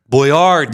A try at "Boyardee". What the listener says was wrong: You got the stress on the accent on the wrong spot.